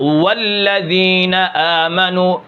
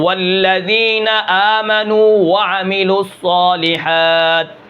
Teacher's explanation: واو جو ہے یہ سخت ادا ہوتا ہے دونوں ہونٹوں کے گول کرنے سے. اس کے اندر جماؤ کے ساتھ والذین آمنوا پھسلتا ہوا ادا نہیں ہوتا.